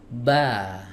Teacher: Huruf ba dari mana makhrajnya? Dari dua bibir yang dipertemukan. Startnya dari situ.